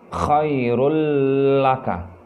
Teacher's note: Tanwinnya juga hilang atau tidak disebutkan, tapi langsung masuk ke dalam suara lamnya. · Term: idgham bila gunnah